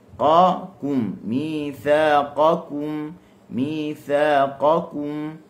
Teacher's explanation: Kaf bagi depan kum, kum, kita akan rasa ada angin. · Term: huruf kaf